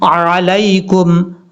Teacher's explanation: عین کو حمزہ کی آواز میں نہیں پڑھنا، عام طور پہ عین کی ہی آواز آنی چاہیے